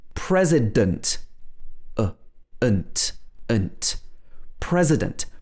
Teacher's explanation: in the next word president the letter e is pronounced with a schwa sound